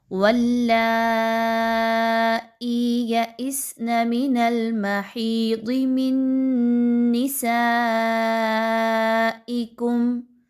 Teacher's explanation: حمزہ کو سین کے ساتھ ملانا ہے۔ اگلے ورڈ میں یا اس میں حمزہ کو سین کے ساتھ ملانا ہے۔ سین میں سیٹی کی آواز کو لائیے